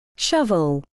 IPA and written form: ˈʃʌvəl (Shovel)